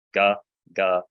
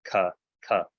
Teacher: If you want to make a g sound and want to make a k sound, your tongue is in the same place in your mouth. They're all called palatals for a reason.